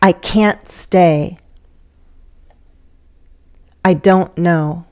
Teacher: we'll have a glottal stop before the main verb